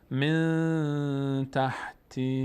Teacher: نون اینجا دوباره ساکنش مخفی شده چون اخفا میشه. در بینی ادا میکنیم.